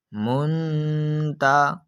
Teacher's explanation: اس جگہ پر نون ساکن موجود ہے اور اس نون ساکن کے بعد حرف تا جو کہ حروف اخفا میں سے ہے، تو اس نون ساکن میں اخفا کا قاعدہ لگ رہا ہے۔ نون ساکن کے بعد حرف تا جو کہ حروف اخفا میں سے ہے موجود ہونے کی وجہ سے ہم اس نون ساکن میں گنا کر کر پڑھیں گے۔